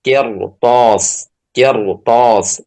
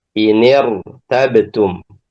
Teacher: Jadi ra-nya dibaca tebal. Karena setelah huruf ra yang sukun itu ada huruf isti'la.